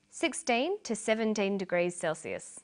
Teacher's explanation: notice that the two is unstressed